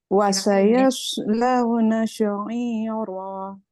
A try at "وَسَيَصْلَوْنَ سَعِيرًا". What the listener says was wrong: Wasayas, satu sod, kemudian satu lagi sin. Jadi jangan wasayas launa sa'i. Jangan. Satu tebal, satu tipis. وسيصلون سعيرا. سعيرا. Sin. Jangan sya. Wasayaslawna jangan sya. Kalau sudah digabung dia sinnya jadi jadi nggak benar. Wasayaslawna sa'ira. Sin biasa kayak kita mau bilang